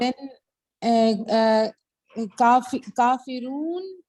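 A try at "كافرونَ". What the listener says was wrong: کافرون نہیں، ہمیشہ حرکت پوری پڑا کرے. رونا. کافرون.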